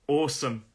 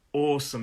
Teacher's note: Awesome, 2 syllables. The stress is on the first syllable. Awesome, it's an aw sound.